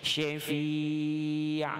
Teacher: huruf shin kita baca dengan 2 gigi kita dirapatkan